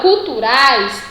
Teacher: Lembrando que o A é o som mais forte, é a vogal, e I é uma semivogal. Então, eu tenho ditongo.